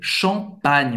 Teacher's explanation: você não vai nasalizar a vogal que vem antes